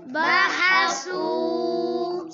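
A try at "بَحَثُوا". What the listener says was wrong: सीटी निकाल रहे हो सा पे बहसा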